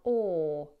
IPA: ɔː